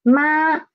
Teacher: And it ended at pitch 5, 2. So it is a level, flat sound. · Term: first tone